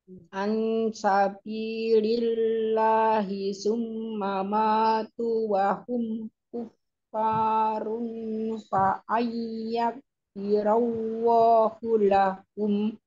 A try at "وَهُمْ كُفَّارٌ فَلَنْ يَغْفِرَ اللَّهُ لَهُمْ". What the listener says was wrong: ثُمَّ مَاتُوا وَهُمْ كُفَّارٌ فَلَنْ يَغْفِرَ اللَّهُ لَهُمْ كفارٌ فا di situ ditahan كفارٌ فلن يغفر الله لهم وهم perhatikan cara bacanya وهم كفارٌ فلن يغفر الله لهم Harus kasih durasi ya, bukan falaya langsung, nggak boleh. Falayak firallahu lahum dikasih durasi, tahan.